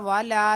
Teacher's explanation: والا واو زبر وا لام الف زبر لا والا لام کو ایک الف کی مقدار کھینچنا ہے واو کو بغیر کھینچے پڑھنا ہے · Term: الف مدہ